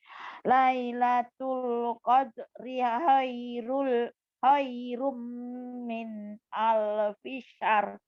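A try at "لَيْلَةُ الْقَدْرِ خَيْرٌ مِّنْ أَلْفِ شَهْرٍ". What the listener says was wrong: Bukan alfisar. Ya, nih lihat mulutnya. Lailatul qadri khairum min alfi syahr. Syahr, bukan syar. Syahr. Kalau di mobil ada seher, ini syahr.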